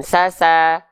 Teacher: Sekarang itu kalau teman-teman melafalkan sin itu pangkal lidahnya dia gak naik. Pangkal lidah ininya gak naik. Makanya dia bunyi vokalnya A kalau sin. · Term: huruf sin